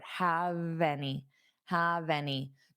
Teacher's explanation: So hold on that v sound on have and take it to your next word.